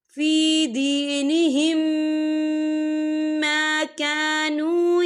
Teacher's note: یہ دیکھیں فی دینہم یہاں میم ساکن ہے، میم ساکن کے بعد پھر میم آ رہا ہے تو یہاں پر ادغام شفوی ہو رہا ہے تو ہم پچھلے میم کو اگلے میم میں مدغم کریں گے اور ہم یہاں غنہ بھی کریں گے